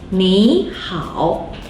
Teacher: 你 in this situation will be pronounced as the second tone 你, even though both 你 and 好 are originally third tone.